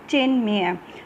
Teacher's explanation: ठीक है, और इधर हमारा म आ गया, अनुनासिक आ गया म, तो त और म दोनों मिलकर क्या हो जाएगा, ये ना बन जाएगा, उसी वर्ग का पांचवा हो जाएगा। तो त का पांचवा क्या होता है, देखो त थ द ध न, ये ना बन जाएगा, और हलंत है तो आधा आ गया, इसलिए चिन्मय। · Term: व्यंजन संधि